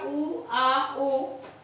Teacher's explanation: पश्च स्वर का मतलब है कि पीछे का, जीभ के पीछे का भाग सक्रिय रहता है